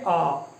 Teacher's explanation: इसमें थोड़ा अ की अपेक्षा ज्यादा मुंह खुलता है आ, ठीक है। बहुत ज्यादा खोलने की जरूरत नहीं है आ करके, ठीक है।